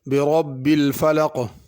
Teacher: برب میں را کو پر کرنا ہے، الفلق کے قاف کو پر کرنا ہے، فلق نہیں پڑھنا۔